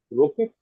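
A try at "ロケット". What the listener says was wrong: So in Japanese, it is rocketto. Yes, the final T also can't stand that way. It has to become a syllable. So it's the O, rocketto. Rocketto.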